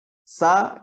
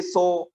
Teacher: Huruf sin, sa, kemudian kita bulatkan bibir jadi so. Sedangkan pangkal lidahnya nggak naik. Jadi sifat isti'la'nya nggak ada.